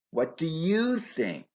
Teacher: In B's response, you is stressed to indicate that his opinion is not important, only yours.